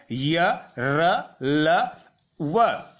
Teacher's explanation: अंतस्थ व्यंजनों का उच्चारण करते समय वायु को थोड़ा रोका जाता है और कम शक्ति के साथ छोड़ दिया जाता है